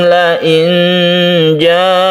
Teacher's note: kemudian nun bertemu dengan jim, kita baca ikhfa hakiki, kita dengungkan dan kita samarkan